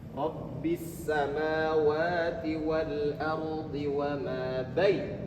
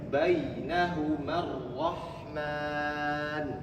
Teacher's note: Waw dengan ya yang didahului oleh huruf yang berharkat fathah. Jadi bunyinya au atau ai. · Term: lin